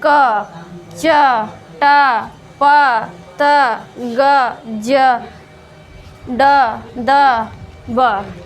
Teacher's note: ऐसे व्यंजन जिनका उच्चारण करने में अपेक्षाकृत कम वायु की आवश्यकता पड़ती है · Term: अल्पप्राण